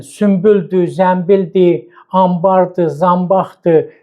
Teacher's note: Bizim dilimizdə N və B samitlərinin yanaşı işləndiyi bir sıra sözlər var ki, onda tələffüz M-lə olur